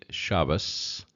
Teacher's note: Ashkenazic would say Shabbos with an S on the end